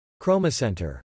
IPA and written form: ˈkroʊ məˌsɛn tər (Chromocenter)